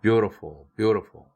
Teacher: beautiful은 t가 모음 사이에 꼈으니까 플랩 돼야 되죠